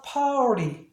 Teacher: 그 다음에 플랩 사운드, T가 플랩 사운드니까 리. 빨리 하면 파티가 아니라 파리.